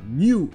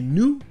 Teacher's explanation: le U aura juste le son OU, sans le son ye avant, juste OU